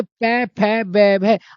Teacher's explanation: आपके ओष्ठ आपस में मिलेंगे, इसलिए इनको ओष्ठ वर्ण कहते हैं